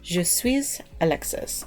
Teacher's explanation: you kind of run the S sound into the vowel